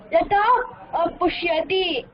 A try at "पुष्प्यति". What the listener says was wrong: पुष्यति इल्ल पुष्प्यति.